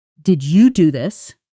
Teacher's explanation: Stress on you. This implies surprise that specifically you did it.